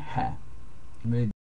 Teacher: hear the air sound that you hear coming from my mouth before you actually hear the sound. Actually, it begins as Hanallah, like you're gonna fog a mirror.